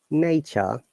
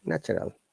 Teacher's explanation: In nature, we do not pronounce R, but when it's natural, because there is a vowel sound after R, we have to pronounce it.